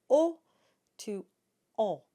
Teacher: our third nasal vowel is the o sound and that starts with a nice round O and that then gets nasalized so we go from o to O and you'll get that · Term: the on sound